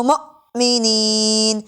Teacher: حمزہ ساکن ہے اس لیے اس کو جھٹکا دے کر پڑھا جا رہا ہے